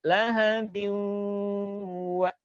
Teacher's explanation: Hitung begini, lahabiu, dua ketukan baru wa.